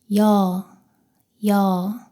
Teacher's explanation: 이에서 시작해서 어로 빠르게 이어서 발음합니다.